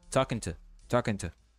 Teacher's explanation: O to basicamente fica muito fraco. E fica com um som de t.